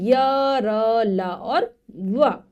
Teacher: हमारी जो जिह्वा है ऊपर की तरफ तालू की तरफ जाती है, लेकिन पूरा उसको छूती नहीं है, इसीलिए बीच में स्थित है। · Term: अंतःस्थ व्यंजन